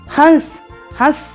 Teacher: इसका उच्चारण करते समय वायु नाक व मुंह दोनों से निकलती है। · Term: अनुनासिक